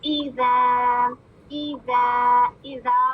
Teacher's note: ای، حمزہ کی کسرہ، غلطی کیا ہوتی ہے؟ اے نہیں ہے، ای